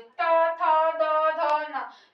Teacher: जिह्वा जो है वो दांत को टच कर रही और हवा वहीं से निकल रही है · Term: दंत्य वर्ण